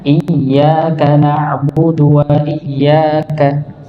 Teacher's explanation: ada hentakan jadi benar-benar kelihatan Hamzah ini masuk ke huruf ya